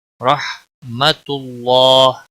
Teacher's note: اللہ کے لام کو موٹا پڑھیں گے پیش کی وجہ سے، اور اس کے اوپر کھڑی زبر ہے، ایک الف کے برابر کھینچ کر پڑھیں گے.